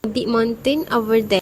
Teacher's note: the word mountain is pronounced with a fully articulated t and each syllable is clearly spoken.